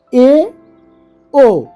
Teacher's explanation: যে স্বরধ্বনি উচ্চারণের সময় জিহভা উচ্চমধ্য অবস্থানে থাকে সেগুলোকে উচ্চমধ্য স্বরধ্বনি বলে